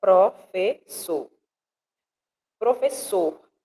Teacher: a sílaba mais forte da palavra professor é a última